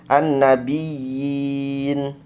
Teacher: An-nabiyyin, panjangnya dua harokat, yinnya dipanjangkan dua harokat